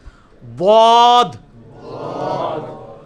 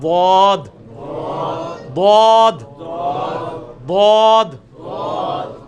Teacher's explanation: ضاد کا آسان ترین طریقہ مخرج کا یہ ہے کہ یہ زبان ہے نا جی, آپ زبان کی جو دائیں یا بائیں کروٹ, کوئی ایک کروٹ, اس کو اوپر کے دانتوں کی جڑ میں لگانا ہے.